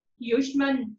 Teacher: जब श को उच्चारण करते हैं उस समय जीभ जो है मूर्धा को स्पर्श करती है। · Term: मूर्धन्य श